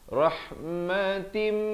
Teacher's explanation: Asalnya ta tanwin di bawah bunyi tin, tan tin tun. Tapi bila datang mim jadi terus masuk jadi rahmatim, 2 harakat.